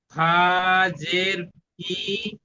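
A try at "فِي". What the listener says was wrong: জি না, ইয়ার ওপর সাকিন আছে, দেখুন ইয়াটা যুক্ত করতে হবে, ইয়ার সঙ্গে টান দিন। ইয়ামাদা আছে তো, ইয়া সাকিন ডান দিকে জের হলো ইয়ামাদা জি।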